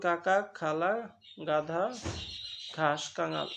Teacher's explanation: ক, খ, গ, ঘ যখন তুমি উচ্চারণ করবা দেখবে তোমার জিহ্বার যে গোড়াটা সেটা আলজিভের দিকে চলে যায়, হ্যাঁ, এবং সেখানে বাতাসটা কিন্তু বাধা পায়। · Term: কণ্ঠ ব্যঞ্জন